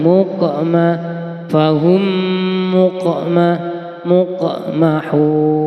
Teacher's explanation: huruf qaf yang bertanda syukun. Bacaan qalqalah sughra. Cara membacanya dipantulkan